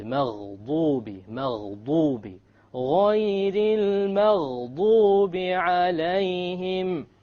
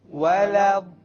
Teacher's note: It is very important that you don't make a ضاد into a dal or a d sound, because the dal comes from the middle of the tongue, but the ضاد, remember, it comes from one entire edge of the tongue along with the molars